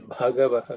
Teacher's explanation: Bha is again the fourth letter in the pa varga, which is aspirated.